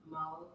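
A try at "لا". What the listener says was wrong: No, you said it backwards. You're looking at, okay, this sound comes first. Well, we read from right to left, but you're gonna read it like this.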